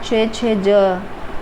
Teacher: तालव्य ध्वनियाँ हैं छ ज